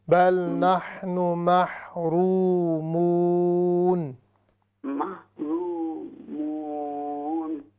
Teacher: رو اور منہ دونوں کو ہم لمبا کریں گے